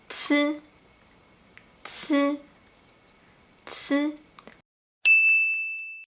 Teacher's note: And the difference between z and c is that c is aspirated, so it has a stronger airflow.